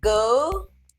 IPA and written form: ɡoʊ (go)